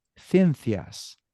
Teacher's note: in Spain they pronunciate the CI and the CE e as if it were a th